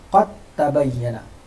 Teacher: Makhraj dan sifat dal hilang, yang bunyi hanya ta.